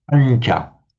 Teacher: the n is slightly palatized before the following sound ch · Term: slightly palatized sound